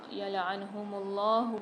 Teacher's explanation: یلعنہم اللہ میں اللہ کو لام کو موٹا پڑھیں گے، اس سے پہلے پیش آ رہی ہے اور کھینچ کے بھی پڑھیں گے۔